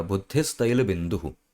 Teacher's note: तैल बिंदु इसकी शुरुआत में त है फिर वही नियम कि विसर्ग के आगे अगर त आ जाएगा तो विसर्ग की स्थान पे सा हो जाएगा तो बुद्धि तैल बिंदु इसकी जगह हो जाएगा बुद्धि तैल बिंदु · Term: सत्व संधि